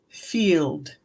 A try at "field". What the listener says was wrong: It's that L sound probably. Field. Field. If the L can come a little bit more forward. Field. Maybe that would help.